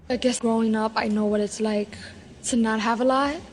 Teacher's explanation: New York Latino English speakers have a particularly light L you can hear that in this native speaker clip I guess